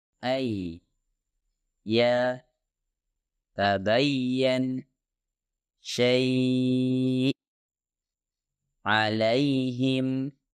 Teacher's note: untuk ya ghairul maddiyah diucapkan dari bagian tengah lidah yang terangkat ke arah langit-langit keras. Tapi intinya ya dihasilkan dengan posisi sedikit di belakang huruf shin dan huruf jim.